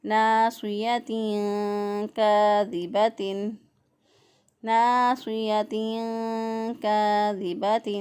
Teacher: کاف زبر الف کا الف مدہ ہے، ایک الف کے برابر اس کو بھی لمبا کریں گے۔